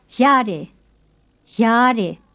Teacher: saying first the creaky high tone word that means it's all right, and then the plain high tone word that means I've got an itch